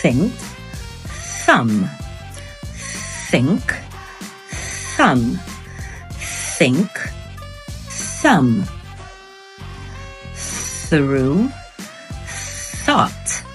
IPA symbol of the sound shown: θ